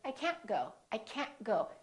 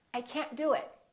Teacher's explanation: you need to hold the T at the end to have a more American accent